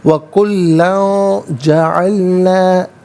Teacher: لام پر 2 زبر کی تنوین، اس کے بعد جیم حرف اخفا ہے تو تنوین کو اخفا کے ساتھ پڑھیں گے